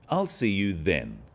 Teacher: the stress is on the word then to confirm that the time is definite